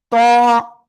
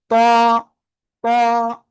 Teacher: কোন জায়গা থেকে উচ্চারিত হবে? ওই যে জিহ্বার আগা উপরের 2 দাঁতের গোড়ায় লাগাবেন, লাগিয়ে একটু মোটা আওয়াজে আপনি উচ্চারণ করবেন।